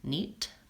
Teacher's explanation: my E is going to be short in duration because it's followed by a T